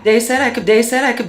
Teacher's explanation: Americans has some features that have persisted throughout Generations th stopping so that might be using something like a D sound for where you see a written th